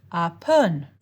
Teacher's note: the first syllable should be pronounced in a high tone and the second syllable in a falling tone. In Thai, low tones are pitched lower than your typical speaking voice, and a falling tone starts higher than your speaking voice, rises a bit, then falls back below the pitch you started with.